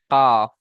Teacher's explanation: 5 নম্বর মাখরাজ জিভের গড়া হতে একটু আগে বাড়িয়ে এবং তার বরাবর উপরের তালুর সাথে লাগিয়ে উচ্চারিত হয় কাফ।